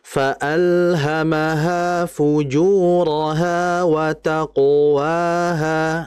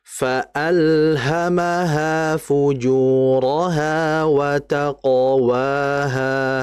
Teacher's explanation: Huruf tebal yang sukun jangan dibaca monyong tapi fokus pada makhrajnya aja. Qof itu kan di aksal lisan yaitu di pangkal lidah. Jadi jangan dibaca watqo wat taqo jangan monyong. · Qaf itu kan di aqsal lisan, yaitu di pangkal lidah. · Yang betul wataqwaha. Yang monyong itu wawunya, qafnya jangan.